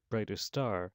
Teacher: So that two words coming together like brightest star, we might lose the t ending on brightest. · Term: Deletion